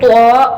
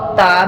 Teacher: تا 2 نقطوں والا جو ہے نا، جس کے اوپر 2 ڈاٹس ہوتے ہیں، وہ تا، اور طا موٹا پڑھا جائے گا، اور تا جو ہے یہ باریک پڑھا جائے گا